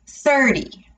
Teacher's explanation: 13 we would stress the end part of that word 13 for the 30 40 50 for those numbers we would stress the beginning part of the word